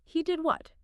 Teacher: If someone tells you something totally unbelievable, you might respond with, "He did what?" With a really high, sharp rise on what, that pitch movement screams disbelief.